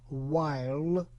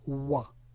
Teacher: Diphthong I turned into monophthong A, and even resonant L completely disappeared. So instead of while, we have wa. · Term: ultimate reduction